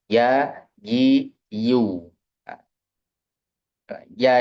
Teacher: Makhronya betul-betul dari tengah lidah.